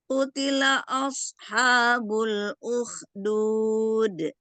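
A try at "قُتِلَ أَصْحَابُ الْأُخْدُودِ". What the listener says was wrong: Slotnya tebal tapi tidak ngangkat A-nya. A-nya tidak tebal. Af, bukan au.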